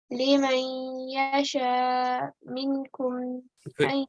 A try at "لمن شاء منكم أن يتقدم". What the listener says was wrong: There's no yeah, so لمن شاء.